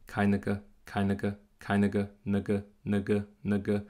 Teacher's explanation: Es ist so wie als würdest du nur N und G sagen ohne Vokal, aber der Vokal kommt automatisch raus, wenn du das machst. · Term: schware